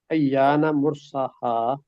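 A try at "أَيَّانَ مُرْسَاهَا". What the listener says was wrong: مرساہا، لمبا کریں، مرساہا۔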